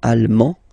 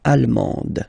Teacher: you don't pronounce the final D, but then you pronounce it here for the feminine form